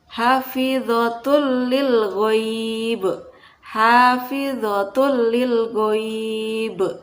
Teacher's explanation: melebur atau memasukkan nun sukun atau tanwin ke dalam huruf idgham bila gunnah, yaitu lam dan ro, tanpa disertai dengan dengung.